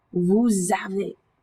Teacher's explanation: that S sound that normally would be silent travels over to meet with that verb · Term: liaison